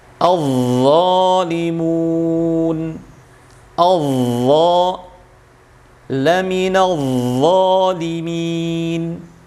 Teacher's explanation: Sama seperti huruf dzal, hanya saja bedanya huruf dzal tipis. Kalau dha karena ada sifat isti'la'nya dan itbaqnya sehingga harus dibaca tebal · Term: huruf dha